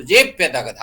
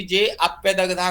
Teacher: यहाँ पूर्व रूप संधि जब होती है तो जे में जो है अ भी आ जाता है, इसलिए अ का अलग से उच्चारण नहीं होता, तो जे प्यदग्धा हो जाएगा, ठीक है ना।